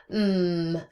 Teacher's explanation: So m is a voiced bilabial nasal. These are all voiced because if we had air escaping into the nasal cavity um and our voice box was off not we're not using any voice no sound would come out.